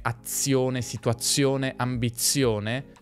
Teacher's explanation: in parole come azione, situazione, ambizione di Z ne scriviamo una, ma ne pronunciamo due